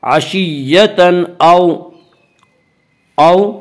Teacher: वावलीन वो वाव जो साकिन उससे पहले ज़बर हो, वावलीन को नरम आवाज़ के साथ पढ़ेंगे · यहाँ तनवीन के बाद हुरूफ़ हल्की में से हमज़ा, इसलिए यहाँ पे इज़हार हल्की होगा